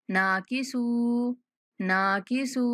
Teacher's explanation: नून के बाद अलिफ मद्दा, सीन के बाद वाव मद्दा, दोनों को 1-1 सेकंड तक खींचेंगे।